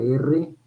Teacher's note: vibrante múltiple el lápiz se toca tres veces